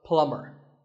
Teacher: the B is silent